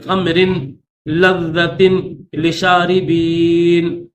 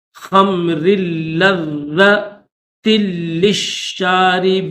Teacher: یہاں پر جو نا وہ غنہ کر دیتے ہیں اور را کو لام کے ساتھ ملاتے نہیں ہے